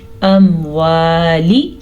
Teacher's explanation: سب سے پہلے واو زبر الف وا, مقدار نوٹس کریں, لمبی ہے, لام زیر لی, اموالی.